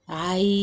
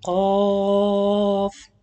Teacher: make sure when you pronounce these three letters to apply the ghunna, the first ghunna light or tarqiq, the second ghunna heavy